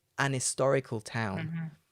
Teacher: when i drop the h it does start with the vowel